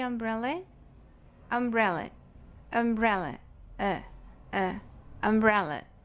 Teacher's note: Aqui nós temos a sílaba mais forte, bre, ok? E aqui no finalzinho, a sílaba átona, umbrella.